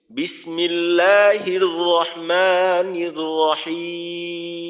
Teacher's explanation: তো এখানে কি করতে হবে, মিমের আওয়াজটাকে একটুক্ষণ চালু রাখতে হবে, আর মিমের আওয়াজটা গুন্না হিসেবে গুন্নার মতো হয়ে চালু থাকে, যেহেতু মিমে এবং নুনে গুন্নার সিফত আছে। তো মিমের একটু গুন্ডার মতো করে আওয়াজটাকে সামান্য সময় চালু রাখতে হবে, তবে এই চালুটা যেন আবার লম্বা হয়ে স্বাভাবিক গুন্ডার মতো হয়ে না যায়, অর্থাৎ একালিফ পরিমাণ লম্বা হয়ে না যায়।